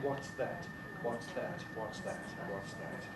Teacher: More conservative pronunciation, alveolar T.